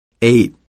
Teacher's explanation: for the a sound the tongue is tensed and raised to the roof of your mouth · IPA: eɪ